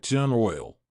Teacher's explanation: the 'r' intrudes into the structure, that is, between the two words. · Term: intrusive R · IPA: tjuːnər ɔɪl